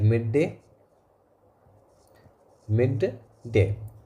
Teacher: a single consonant sound that is held for the long duration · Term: geminate